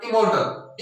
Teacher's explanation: आर के बाद में टी है और टी कॉन्सोनेंट है, तो आर साइलेंट हो जाएगा